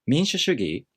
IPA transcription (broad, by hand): minshushuꜜgi